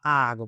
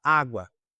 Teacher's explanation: Então, se um poema fala a água, você não fala a água, você fala água somente uma vez, você só fala um a. Você une, você funde as duas sílabas em uma única só. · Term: crase